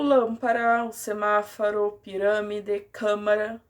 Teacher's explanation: As palavras esdrúxulas é a antepenúltima sílaba, que é a tônica.